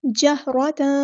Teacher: تا کے اوپر جو دو زبر ہے نا یعنی تنوین کی آواز کو ہم چھپا دیں گے کیونکہ آگے فا آ رہا ہے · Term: اخفا